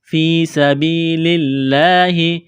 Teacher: لفظ اللہ کے نام سے پہلے زیر ہے، لفظ اللہ کے نام کو باریک کرنا ہے